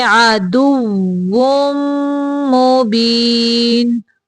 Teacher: یہاں پہ واؤ کی ادائیگی کے وقت دانتوں کا استعمال نہیں کریں گے ہونٹوں کو گول کریں گے